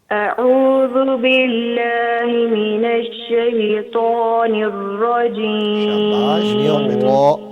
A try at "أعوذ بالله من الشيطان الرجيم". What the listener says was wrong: را تھوڑا سا موٹا کریں گے اور اسی طرح او کے بجائے عین نکالیں گے. پہلا حمزہ ہے، دوسرا عین.